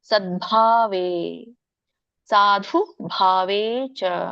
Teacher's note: ಪ್ರಶಸ್ತೆ ಕರ್ಮಣಿ ತಥಾ ಸಚ್ಚಬ್ದಪಾರ್ಥಯುಜ್ತೆ ಸದ್ಭಾವೆ ನೋಡಿ ಇಲ್ಲಿ ದ ಕ್ಕೆ ವ್ಯಂಜನ ಇರೋದ್ರಿಂದ ದ ಕ್ಕೆ ಮುಂದಿನ ಪದ ಭ ಇದೆ ದ ಕೆ ಬ ಒತ್ತಕ್ಷರ ಬಂದಹಾಗೆ ನಾವು ಹೇಳಬೇಕು ಉಚ್ಚರಿಸಬೇಕು